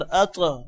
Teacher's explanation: اب طا موٹا بھی ہو رہا ہے اور طا پر قلقلہ بھی آ رہا ہے